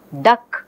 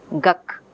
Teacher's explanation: So ka is velar, ga is velar. So duck is becoming guck, because both ga and ka are of the same place. · the later occurring velar sound ka is influencing the first sound. Okay, instead of saying the, which requires moving the place of articulation, the child is staying with velar articulation. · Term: assimilation